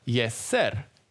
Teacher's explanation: The simplest way would be to say jest ser. But the T sound, squeezed between the 2 S sounds, well, it's often inaudible. You just can't hear it. As a result, we hear yes sir.